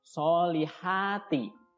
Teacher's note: Wa'amilus solihati, so-nya panjang 2 harokat, kemudian ha juga panjang 2 harokat, ya. Cara membacanya seperti kalian menghela nafas. Soliha, ya, tipis saja, tidak keluar dari dada